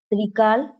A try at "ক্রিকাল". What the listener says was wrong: আচ্ছা, ওটা না ত্রি না হয়ে কয় কয়, হ্যাঁ,